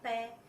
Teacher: प का उच्चारण करने पर हमारे दोनों होंठ जो हैं वो आपस में मिलते हैं।